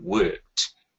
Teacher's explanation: So if you look at the word worked, so the word actually finishes with a voiceless sound. And then we want them to be able to hear the t at the end, that change t.